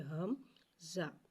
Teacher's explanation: حمزہ کی آواز ہا کی طرح بھاری آواز ظاہر ہوگی